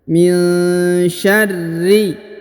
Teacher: Kemudian huruf ra ditahan dan ditekan karena berharokat tasdid.